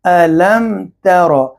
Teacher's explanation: میم ساکن کے بعد تا ہے تو لہٰذا اظہار ہوگا میم میں